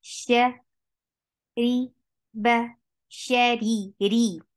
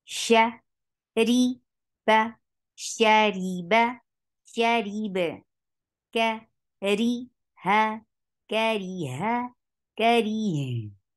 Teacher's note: ra with kasra is always light